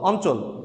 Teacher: ইও এর সাথে চ স জ ঝ যুক্ত হলে সেই ইও এর উচ্চারণ দন্তের ন এর মতো হয়। তো এখানে দেখো ইও এর সাথে চ যুক্ত হয়েছে, কিন্তু এই ইও এর কিন্তু স্বতন্ত্র উচ্চারণ হয়নি, বরং ইও এর উচ্চারণটা দন্তের নর মতো হয়েছে।